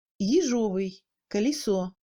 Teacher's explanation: Au lieu d'un «е», on entend un son moyen entre le «и» et le «э». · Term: premier degré de réduction